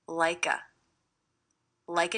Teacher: I hear the K linking to the schwah.